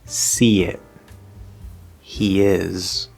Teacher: we're going to hear a tiny, tiny, tiny little bit of a Y sound between the first word and the second word. Not a full Y sound, okay?